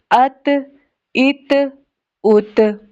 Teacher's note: आपकी जो tip of the tongue है is touching to the root of your upper teeth. आपकी जुबान की नोक आपके दांतों की जो जड़ वाली जगह है ना, ऊपर वाले जो दांत, उनकी जो रूट है वहां पे टच कर रही है।